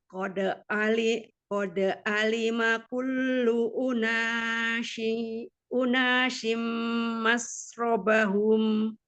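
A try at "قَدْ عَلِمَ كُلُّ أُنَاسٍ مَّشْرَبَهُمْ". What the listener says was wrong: Nah, terbalik yang unasin sin biasa. Kalau mas yang titik 3. Qad alima kullu unasim mashrabahum. Ada tasdid kullu Nah, mashrabahum.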